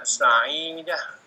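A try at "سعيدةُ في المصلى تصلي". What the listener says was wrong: Ini Sa'idatu domahnya satu ya, bukan dua. Sa'idatu fil musalla tusalli.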